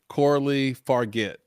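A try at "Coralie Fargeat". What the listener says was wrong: No, This is no. I think the G is a J sound, so this would be a Farjit.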